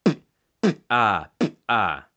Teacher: The last airstream mechanism is lingual egressive, and in Damin it's a single consonant which is also known as the bilabial spurt, and it's supposed to be pronounced something like ah.